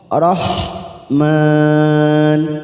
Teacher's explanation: Ada huruf ha yang disukun, maka kita lembutkan